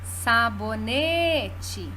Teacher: me é a sílaba tônica e ela é a penúltima da palavra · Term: paroxítona